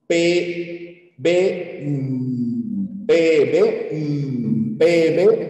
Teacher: los fonemas bilabiales los labios se cierran